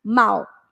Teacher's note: Aí, né, o som ele cai, né, ele diminui, igual mal, né? Começa com um som bem forte do A, mas quando chega no U diminui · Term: ditongo decrescente